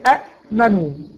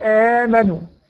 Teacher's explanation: اجتمعت همزتين الاولى منهما متحركه والثانيه ساكنه، فبدلت الهمزه الثانيه من جنس حركه ما قبلها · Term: مد البدل